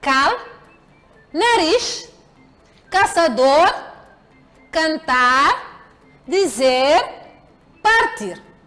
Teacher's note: São palavras agudas cujas sílabas tônicas são as últimas